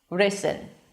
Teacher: there's a light tap there, but it still sounds like an R sound